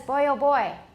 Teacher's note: We call it a voice stop, but it's very often not voiced.